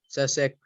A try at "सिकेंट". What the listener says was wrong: सिकेंड not सेक। कल बोला था ना सेक नहीं बोलना इसको। tan का रेसिप्रोकल होता है महक कॉट, कॉस का रेसिप्रोकल होता है सिकेंट, साइन का रेसिप्रोकल होता है कॉसिकेंट।